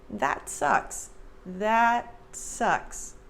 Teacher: And for the American pronunciation, notice that I don't say that. There's no air released at the end of that T. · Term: very subtle T